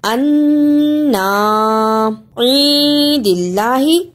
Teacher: انا عید اللہ اخفا ادا کرنے کا طریقہ نون ساکن کو تھوڑی سی دیر ناک میں چھپانا ہے